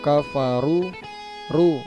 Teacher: ro berharakat dhammah atau fathah dibaca tebal, ro tafkhim. Kemudian waw sukun didahului huruf dhammah mat tabi'i, ru dibaca panjang.